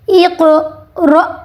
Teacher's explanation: جھٹکا دینا ہے حمزہ ساکن پہ